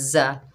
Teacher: यह जा के ऊपर ज़बर, जा सख्ती वाला हरूफ है, सख्ती और सीटी से अदा करेंगे, और जा के ऊपर ज़बर है, बगैर खिंचे पढ़ेंगे जा।